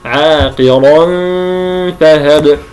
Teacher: من باطن الشفه السفلى مع اطراف الثنايا العليا فاقرا عاقرا فهب هذه الشفه السفلى تتجه الى اطراف الثنايا العليا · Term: الفاء